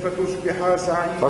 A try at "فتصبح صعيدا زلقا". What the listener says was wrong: فتصبح ما تمدش الحروف قلش فتصبح تولي بالألف هذيك فتصبح صعيدا زلقا